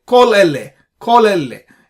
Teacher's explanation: you need to pronounce both the words together very rapidly without much gap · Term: makef